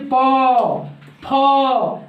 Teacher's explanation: जिन वर्णों का, देखिए अघोष जिन वर्णों का उच्चारण यानी कि स्वर तंत्रीय आपस में झनकीर्ति उत्पन्न नहीं करेगा, यानी कि हम बोलेंगे तो झनकार नहीं देगा